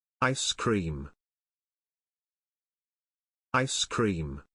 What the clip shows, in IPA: ˌaɪs ˈkriːm